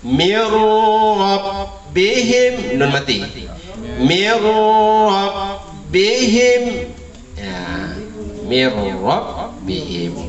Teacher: Jadi hilang nunnya, langsung dia bertasdid ke roh. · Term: idgham bila gunnah